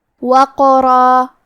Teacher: کلمت وقرہ میں حرف القاف پہ جزم ہے، لہذا ہمیں قاف کو قلقلہ سے پڑھنا ہے، اور قلقلہ کا معنی ہے حرف ساکن کو ہلانا، تو ہم قاف کو ہلاتے ہوئے یہ کلمہ کو پڑھیں گے